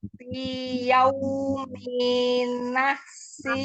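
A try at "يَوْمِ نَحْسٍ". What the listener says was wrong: Pendek ininya. Minya pendek. Fi yaumi nahsim.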